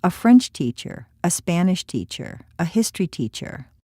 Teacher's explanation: this is a set phrase the stresses on the subject being taught not on the nationality of the teacher